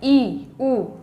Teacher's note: यहाँ पे मुंह क्या रहेगा, मुख विवर बंद रहेगा। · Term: संवृत